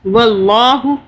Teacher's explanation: اللہ کو موٹا پڑھا، اللہ سے پہلے زبر آ رہا ہے